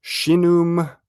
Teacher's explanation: it has the sh sound, right? Shin sibilant, as well as the gemination, the double n